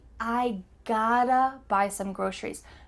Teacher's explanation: In the middle of the word, there are two T's. These T's are going to change to a D sound in American English. This is a typical concept in American English that when you have a T and a vowel on both sides, the T is going to sound like a D.